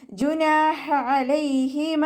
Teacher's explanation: ഹ അക്ഷരത്തിൻ്റെ സൗണ്ടിനെ തൊണ്ടയുടെ മധ്യഭാഗത്തു നിന്ന് തന്നെ കൊണ്ടുവരാം കേട്ടോ. തൊണ്ടയുടെ അവസാന ഭാഗത്തു നിന്ന് വരുന്ന ഹ എന്നുള്ള അക്ഷരത്തിൻ്റെ സൗണ്ടായി പോകരുത്.